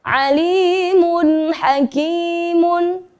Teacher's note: Dhomatain bertemu dengan huruf ha, maka membacanya harus jelas.